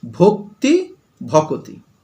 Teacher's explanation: ক আর ত, তার মাঝখানে দেখো একটা অ চলে এসেছে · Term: স্বরভক্তি